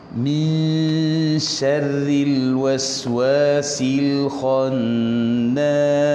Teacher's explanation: ra tu tarkik, ra tu nipis bunyi dia ya, bukan tebal ya